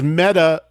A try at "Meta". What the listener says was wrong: It's actually Meta with a long E, phonetically incorrect. Meta.